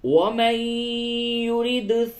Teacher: نون ساکن کے بعد یا ہے، ادغام مع الغنہ ہوگا. ومن يرد، دال میں قلقلہ ہوگا